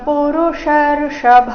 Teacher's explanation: ಪುರುಷರ್ಷಭ ಎರಡು ಮೂರ್ಧನ್ಯ ಶ ಬಂದಿದೆ ಪುರುಷರ್ಷಭ ಈ ಶಬ್ದದಲ್ಲಿ ಕೊನೆಗೆ ಭ ಮಹಾಪ್ರಾಣ ರಸ್ವ ಪುರುಷರ್ಷಭ ಸಮದುಃಖ ಸುಖಂ ಧೀರಂ